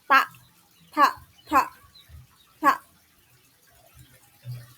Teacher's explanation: Pengucapan huruf ta, bertemunya ujung lidah dengan dua lipatan dan gusi bagian depan. Memisahkan ujung lidah dengan terbuka lebar, maka akan keluar udara ledakan, tidak bergetar pita suaranya ya.